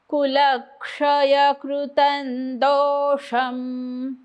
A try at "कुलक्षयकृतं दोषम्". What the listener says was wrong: हा शब्द गेलाय म्हणा